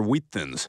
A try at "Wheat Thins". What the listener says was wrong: Why are you putting so much emphasis on the H?